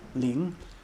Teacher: it starts low and goes higher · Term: second tone